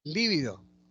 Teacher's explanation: Lívido, la tónica es li, esdrújula